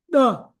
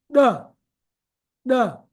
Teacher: What you are doing is touching the tongue to the upper palate behind the teeth and bringing it down. The. There is a implosion. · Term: special Sindhi sound